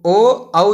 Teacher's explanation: और ओष्ठ प्लस कंठ, कंठोष्ठी, ओष्ठ और कंठ, कंठोष्ठी, है ना। तो ओ औ जो है इसका उच्चारण स्थान जो है वो कंठ और ओठ दोनों से होता है